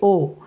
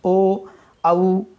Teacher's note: ओ बोलेंगे ओ, तो ओंठ जो है गोल हो जाते हैं, ओ औ, तो ओंठों का कार्य होता है, इसीलिए यहाँ पर कंठ और ओष्ठ दोनों हो गए। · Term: कंठौष्ठम